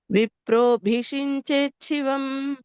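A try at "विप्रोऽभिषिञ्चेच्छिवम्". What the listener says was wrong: శివం ఇంకా కొద్దిగా మహాప్రాణం స్ట్రెస్ రావచ్చు.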